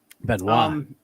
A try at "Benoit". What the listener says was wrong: You don't say the T. The T. Well, the T